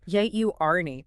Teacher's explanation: The first syllable sounds exactly like the word jury, or the beginning of journal. Make sure you emphasize that first syllable heavily. It is absolutely not pronounced journey.